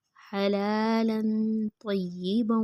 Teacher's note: ہا کی آواز حلق سے نکالیں گے